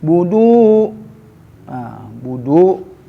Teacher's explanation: bu pendek tidak ada wau, tapi du panjang karena ada wau pasangannya, doma sama wau disebut mad tabi'i.